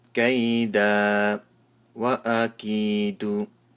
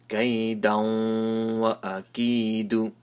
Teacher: So what happens is that after tanween, there is a waw, and waw is one of the letters of idgham. So I make a nasal sound and also give a little sound of waw at the end.